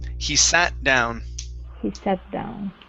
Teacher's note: mix that t and the d together